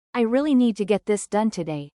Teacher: Hear how, really, need, get, and, done, stand out.